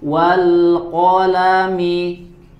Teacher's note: Di sini qafnya dibaca tebal, ya. Qaf berharokat fathah.